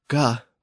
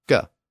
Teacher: that aspirated G sound, guh, became a regular G sound, guh